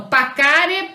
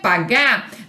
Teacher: A consoante Q é surda, a consoante G é sonora.